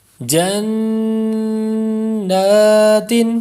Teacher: اس پر نون مشدد کا غنہ ہے اس لیے لمبا کریں گے